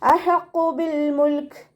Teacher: ഹ അക്ഷരത്തിൻ്റെ സൗണ്ടിനെ തൊണ്ടയുടെ മധ്യഭാഗത്തുനിന്ന് കൊണ്ടുവരാൻ ശ്രദ്ധിക്കുക. ഖാഫ് ഇസ്തിഅലാന്റെ ലെറ്റർ ആയതുകൊണ്ട് നാവിൻ്റെ ബേക്ക് മുകളിലേക്ക് പൊക്കിയിട്ട് തഫീം ചെയ്യുക കേട്ടോ.